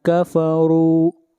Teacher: را کو موٹا پڑھیں گے، را کے اوپر پیش ہے۔